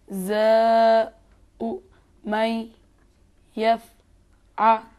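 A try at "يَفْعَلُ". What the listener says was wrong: अगर ये इस आइन को अगर थोड़ा और जोर लगाएं तो अच्छा होगा। आपने सही अदा किया, लेकिन थोड़ा और जोर भी लगाएंगे और भी अच्छा होगा। यफ़ आ लु।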